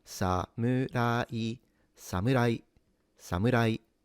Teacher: You start low sa you go high mu sa mu and then keep high rai. · that is considered in Japanese a accentless word or a flat accent